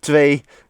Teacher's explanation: Double E in Dutch makes an A sound, kind of like in hey